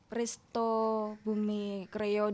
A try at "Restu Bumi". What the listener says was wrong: Bukan resto tapi Restu Bumi.